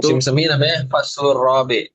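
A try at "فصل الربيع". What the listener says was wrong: kalau misal musim semi itu robi, bukan robi, tapi roba, ya ain, bukan robi pakai ba sama ya, ba ya ain,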